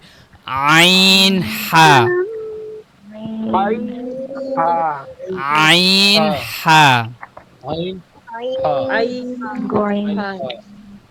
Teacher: এরপরে দেখেন 2 number মাখরাজ, 2 number মাখরাজ, হলকের মধ্যখান হইতে, এটা হলকের হরফের মধ্যখান মধ্যখান হইতে হইতে এখানে, হ্যাঁ, গলার মাঝখান থেকে, আইন হা, আইন হা।